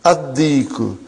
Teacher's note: Why you did not pronounce lam? Because it is sun letter.